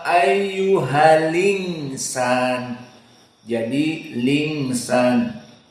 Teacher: Kemudian al-insan di sini dalam keadaan an-naql. Al-insan, hamzahnya dihapus, tinggal lam, berarti disambung dengan ha.